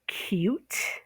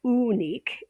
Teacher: There's the u with the y in front of it